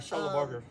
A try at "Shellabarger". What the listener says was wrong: No burr. No burr. A bar. You know, like alcohol bar. Shellabarger.